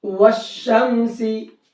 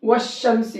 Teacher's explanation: واو کو شین میں ملایا ہے، یہاں پر نہ الف پڑھا ہے نہ لام پڑھا ہے، دونوں کو چھوڑ دیا ہے۔ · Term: حروف شمسی